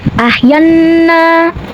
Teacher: Selanjutnya nunnya dihukumi dengan guna musyadadah. Karena nun bertasydid maka cara bacanya adalah nunnya ini didengungkan. Jadi bunyinya n-nya ditahan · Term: gunnah musyadadah